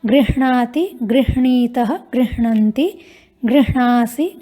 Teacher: गृह्णाति इस तरह से बोलेंगे, पहले ह उसके बाद ण